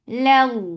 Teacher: keep this lam light, but lafz jalala will heavy because there is fatha before it